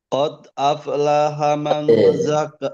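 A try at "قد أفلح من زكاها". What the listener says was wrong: Qad, jangan lupa qalqalah.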